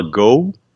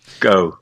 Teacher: O americano tem um pouco mais de ditongo, meio que 2 sons de vogais e o British é mais reto. · A transcrição fonética desse O do inglês britânico é com o schwa, né? Que o schwa é aquele som átono que permeia quase todas as palavras do inglês, né?